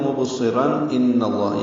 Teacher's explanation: مبصرا ملائیں گے تو مبصران ان اللہ، یعنی اظہار ہوگا، تنوین کے بعد حمزہ آنے کی وجہ سے اظہار حلقی ہے